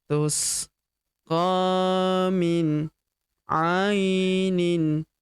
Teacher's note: Huruf A kita ayun sekali karena terdapat ya sukun di depannya